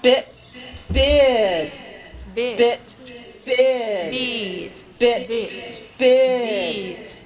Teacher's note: You could feel the difference between the short I and the longer I that is produced when we have a voiced consonant ending that particular syllable